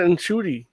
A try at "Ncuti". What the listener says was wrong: Okay, well, you're still pronouncing the N. You don't pronounce the N or the hard R.